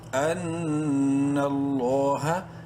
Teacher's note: لام کو بولڈ اور ایک الف کے برابر لمبا کریں گے کھڑی زبر کی وجہ سے. لام کھڑی زبر لا، ہا زبر ہا.